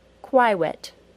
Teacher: here's the word quiet with an accidental W sound added instead of the correct Y sound